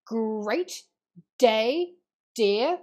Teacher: you've got plosive alliteration in great day deer the g and the d sound